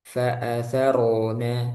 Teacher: ro selain dia tebal, dia juga ada aliran